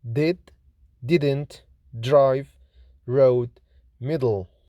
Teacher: D is voiced, lenis, alveolar, plosive consonant, like in did, didn't, drive, road, middle. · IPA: /d/